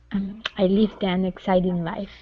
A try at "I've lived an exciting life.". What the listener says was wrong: Okay, now give me that V. I've lived an.